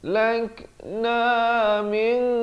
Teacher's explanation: ikhfa hakiki di sini disamarkan dengan tebal 2 harakat. Min ra-nya dibacakan tebal.